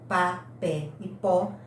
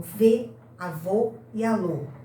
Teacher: as vogais podem ser abertas, aquelas que têm maior abertura do canal bucal, como pá, pé e pó, ou fechadas, as que têm menor abertura do canal bucal